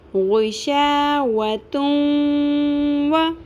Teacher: غیشاوتون وا، نہ تن کلیئر کر کے اظہار کرنا ہے، یعنی کہ نون ساکن کی آواز جو تنوین کے اندر آ رہی ہے اس کو کلیئر نہیں کرنا، اور نہ ہم نے اس کو بالکل ختم کرنا ہے، تو وا بھی نہیں پڑھنا. نون کی آواز رہے گی لیکن ساتھ واو کی مکس ہو جائے گی